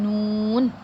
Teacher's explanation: نون کا مخرج یہ ہے، یعنی اس کی ادائیگی کا جو وہ طریقہ جو ہے وہ یہ ہے کہ زبان کا کنارہ انیاب سے ثنایا تک کے داڑوں کی جڑ سے لگے۔ جب زبان کا کنارہ انیاب سے ثنایا تک کے داڑوں کی جڑ سے لگے تو ادا ہوتا ہے نون